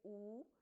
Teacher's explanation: और जो rounded vowels हैं जैसे ऊ, तो उसके लिए आपको अपने lips को round करना पड़ेगा. So your lips will be in a rounded position.